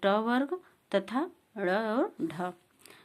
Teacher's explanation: इनके उच्चारण में जीभ तालु कठोर तालु को छू जाती है। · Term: मूर्धन्य वर्ण